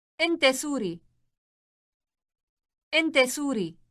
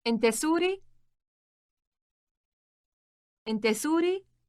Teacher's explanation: To make this sentence a question, simply use a rising intonation.